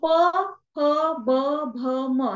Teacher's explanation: ओठ एकमेकांना स्पर्श केल्याशिवाय आपण उच्चारू शकत नाही